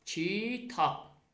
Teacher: Məsələn, kitab yazılacaq, tələffüzdə olacaq, kitab, P kimi tələffüz olunacaq.